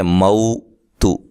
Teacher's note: اس کے بعد یہ جو ہے یہ واو لین ہے، ٹھیک ہے، موتو، تا کو لمبا نہیں کریں گے اور موٹا بھی نہیں کریں گے